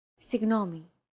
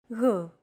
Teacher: it's like a very soft continuous and loosely held G almost as if you're gargling but don't make it sound too throaty